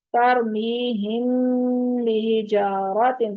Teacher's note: میم ساکن کے بعد حرف با آئے تو وہاں پر میم کی آواز کو چھپا دیتے ہیں، خفی کر دیتے ہیں۔ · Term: اخفا